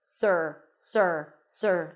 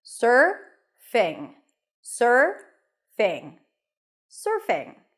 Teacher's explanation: you transition directly from the s to the r sir sir sir like yes sir there isn't an oo sound